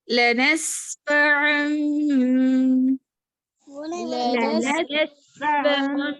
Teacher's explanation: سین میں سیٹی کی آواز اور عین کا مخرج کلیئر ادا کیجیے